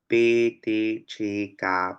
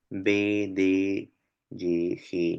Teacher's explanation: esas formas sordas tienen sus correspondientes formas Sonoras